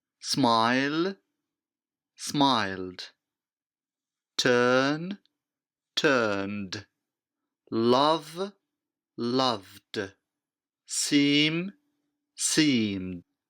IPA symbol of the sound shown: d